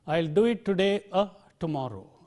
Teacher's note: Take the other one, or, another conjunction. The full form is or, but the weak form is a.